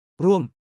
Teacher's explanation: Imagine the tone dropping down like a ball rolling downhill. Ruam, start high, drop low. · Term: falling tone